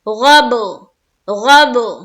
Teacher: غب میں با کے اوپر پہلے سے سکون ہے تو سکون ویسے ہی رہے گا، صرف ہمیں قلقلہ کرتے ہوئے آیت کرنا ہے